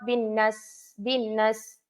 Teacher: bin tak dengung kemudian tak panjang Nas